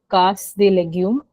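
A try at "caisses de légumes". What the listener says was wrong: Caisse de légumes. AI is different. This is A.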